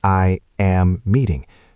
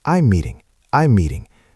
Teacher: Notice how she glides over I am. She doesn't say I am meeting. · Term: contraction